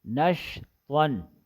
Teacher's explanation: شین میں تفشی ہے، آواز منہ میں پھیل جاتی ہے